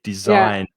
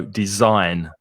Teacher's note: the stress is on the second syllable